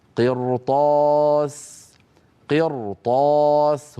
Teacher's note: الراء نطقتها مفخمه لما لانها ساكنه كما نرى وقبلها مكسور وهو القاف وبعدها حرف استعلاء غير مكسور وهو الطاء